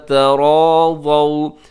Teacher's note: ازواجہن اذا تراضوا، تراضوا یہاں پہ آخر میں واو لین ہے، واو ساکن سے پہلے ضاد کے اوپر زبر ہے، یہ واو لین ہے، نرمی سے پڑھیے گا، جھٹکا نہ دیجیے گا